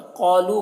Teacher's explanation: कुम के मीम में इजहार शफवी हो रहा है। क़ालू क़ाफ को पुर पढ़ना है और यहाँ पर अलिफ मद्दा है। लू में जो मद है, इस मद को मद्द मुनफसिल कहते हैं।